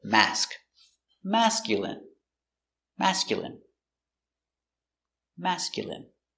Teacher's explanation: Masculine. Stress on the first syllable.